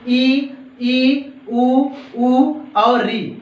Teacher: मुख न के बराबर खुलता हो, अर्थात लगभग सा बंद रहता हो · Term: समृद्ध स्वर